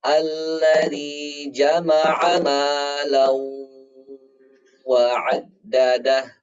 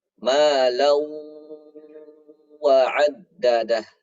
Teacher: ini tanwin tidak sejajar bertemu dengan huruf waw, maka cara bacanya didengungkan. Ya. Malan wa 'addadah, ditahan lama dengungnya.